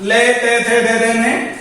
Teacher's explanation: इन वर्णों का उच्चारण करने में जिह्वा दांतों का स्पर्श करती है। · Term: दंतीय वर्ण